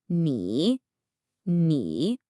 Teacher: A really common mistake is not making that dip low enough. You really want to feel your pitch drop before it comes back up. · It has this falling then rising quality. Think of your voice dipping down and then scooping right back up. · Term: third tone